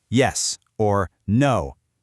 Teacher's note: Let's start with the falling tone, a strict downward pitch. If I look at you and say yes or no, notice that drop.